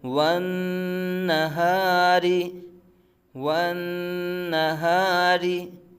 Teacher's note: را کے نیچے زیر ہے تو را باریک پڑا جائے گا، والنہاری، را باریک پڑا جائے گا۔